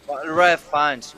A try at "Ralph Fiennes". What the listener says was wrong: Reef. Reef. Reef. Reef. It's Reef Fiennes. It's spelled Ralph, but it's pronounced Reef.